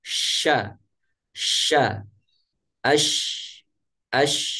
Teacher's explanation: menyebar di mulut disebabkan oleh ketika huruf Sinin Ini diucapkan ini anginnya membentur dinding gigi seri atas dan gigi seri bawah sehingga angin tersebut penuh di dalam mulut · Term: tafasyi